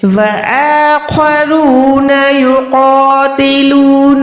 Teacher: क़ाफ़ मोटा है, उसके साथ जो अलिफ अटैच है हमने उसको भी मोटा अदा करना है